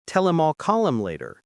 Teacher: the H in him drops out completely